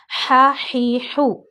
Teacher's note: ہا ہے گلے کے درمیان والے پارٹ سے ادا ہوتا ہے